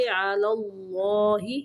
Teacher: اللہ کا لام موٹا پڑھیں گے